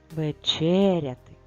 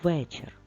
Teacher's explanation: в слові вечеряти наголос в другому складі в слові вечір наголос в першому складі але ми дуже чітко під наголосом чуємо звук е тож запишемо